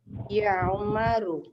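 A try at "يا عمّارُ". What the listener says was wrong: Ammar. Ya Ammaru. Nah, kalau Umar tidak pakai alif ya. Umar tidak pakai alif.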